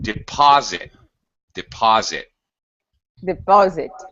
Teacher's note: It has second syllable stress